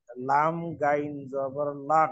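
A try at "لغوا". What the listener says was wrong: গাইন না, গইন।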